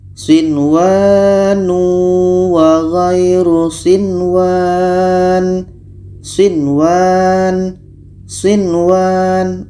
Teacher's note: Dibaca jelas dan tidak dengung. Nun jelas, waw jelas, dan di sini tidak boleh didengungkan. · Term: izhar wajib